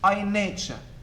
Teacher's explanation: But in order to create the rhythm created by the iambic meter, then we should not, when we read this line, stress I. We should weaken I and say I, nature.